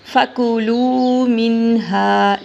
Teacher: لام کو بھی لمبا کریں گے ہا کو بھی لمبا کریں گے